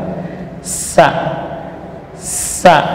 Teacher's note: huruf shafir sughra, posisi ujung lidah di ujung gigi seri bawah, sementara gigi seri atas bawahnya rapat. Sa, sa. Jadi ujung lidah tidak sampai mendorong gigi, ya, ya, karena sin ini huruf shafir itu ada desisnya.